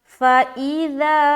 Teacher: یہ تقریباً 3 لائن کا ہے، تو سب سے پہلے اوپر دیکھیں گے، یہ لفظ ہے فَإِذَا، فا زبر فا، حمزہ زیر ای، ذال الف زبر ذا، فَإِذَا، ذال کو بہت ہی نرمی کے ساتھ اور بغیر سیٹی کے ہم ادا کریں گے۔